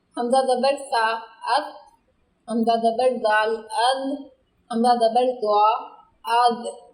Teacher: زبان کی نوک جب اوپر والے سامنے کے دو دانتوں کے ساتھ لگے تو یہ حروف ادا ہوتے ہیں، اور یہی ان کا مخرج ہے۔